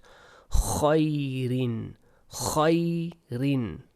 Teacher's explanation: It's like a scratchy sound at the back of your throat.